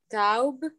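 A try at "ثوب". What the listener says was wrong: No, you cannot say taub because you have a dhamma here. Once you have a dhamma here, it has to be u. Okay, and the wow here, it elongates the movement. So it's tube. Tube.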